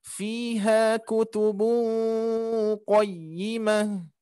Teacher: ada tanwin bertemu huruf qof qaf termasuk huruf ikhfa maka harus kita dengungkan